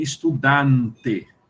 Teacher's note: o véu do palato dele está colado, impedindo que o fluxo de ar passe pela cavidade nasal